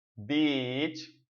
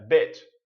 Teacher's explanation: É um som de E. É o iniciozinho do I. É como se estivesse cortando ele bem antes da metade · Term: short I